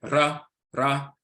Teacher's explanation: the tip of the tongue is hitting the roof of the mouth once or or more than once.